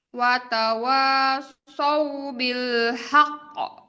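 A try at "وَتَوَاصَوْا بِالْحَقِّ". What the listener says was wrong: Masih buru-buru. Haqq bil haqq. Ditahan dulu. Tahan dulu baru. Itu 2 harokat.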